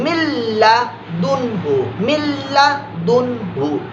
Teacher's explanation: इसी तरह मीम नून लाम जेर, मिल, मिल लाम की साउंड निकलेगी, नून की साउंड नहीं आएगी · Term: इदगाम